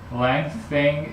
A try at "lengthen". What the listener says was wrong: Not lengthen. Lengthen. You're putting a G at the end. It's lengthen. Lengthen. Okay, here's what you're doing versus what you should be doing, okay? You're doing lengthening, it's lengthen.